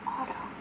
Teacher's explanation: it's not as a soft awe, like you would have in English, but it's a sharp, long awe, like awe. In a word, auto.